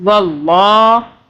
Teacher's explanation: اللہ کو موٹا پڑھیں گے کیونکہ اللہ سے پہلے واو کے اوپر زبر